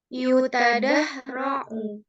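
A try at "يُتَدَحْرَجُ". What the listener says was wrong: Jim. Ini huruf jim ya. Ini huruf jim.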